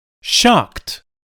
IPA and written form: ʃɑːkt (shocked)